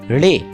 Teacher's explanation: اگر کسی مصمتے کی ادائیگی میں تلفظ کار مقام ادائیگی پر دستک سی دے کر ہٹ جائے تو اس مصمتے کو تھپکدار مصمتے کہتے ہیں، جیسے ڑے تھپکدار مصمتے ہیں۔